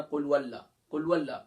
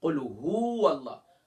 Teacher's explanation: ہا کو واو سے نہیں ملا رہے, ہا کے اوپر الگ حرکت پیش ہے اور واو کے اوپر الگ حرکت زبر ہے